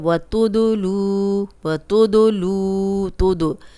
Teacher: दाल पे जज़म आ गया है, हिला के पढ़ रहे हैं। कलकला वाला हर्फ है।